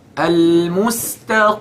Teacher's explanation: So the qaf is heavy, but this is the least level of heaviness.